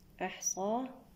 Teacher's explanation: أحصاه، هنا همس الحاء، أحصاه بعد الصاد هنا الألف الخنجرية الصغيرة، ما الطبيعي بمقدار حركتان